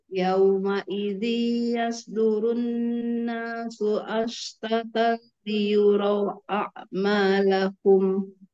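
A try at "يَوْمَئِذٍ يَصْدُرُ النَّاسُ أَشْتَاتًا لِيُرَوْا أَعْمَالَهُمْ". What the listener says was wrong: Itu gomnya sayang. Tanwin ketemu dengan ya. Dengan digunakan.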